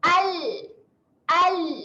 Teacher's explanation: naikkan sahaja hujung lidah ke gusi atas, bunyinya al. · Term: huruf lam